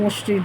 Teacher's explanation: যখন উচ্চারণ করছি স্বরটা সংকোচন হয়ে যাচ্ছে, কমে যাচ্ছে। আর আদি অক্ষর যেটা প্রথম অক্ষর সেটা শ্বাসাঘাত করার জন্য মধ্যস্বর লোপ পাচ্ছে। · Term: মধ্যস্বরের লোপ